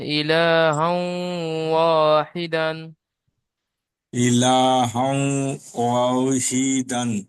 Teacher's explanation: তানবিনকে অয়ের সাথে মিলিয়ে এক আলিফ পরিমাণ গুণনা করে পড়তে হবে।